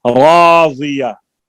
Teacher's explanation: ये रा भी पुर होगी, इसके ऊपर जबर है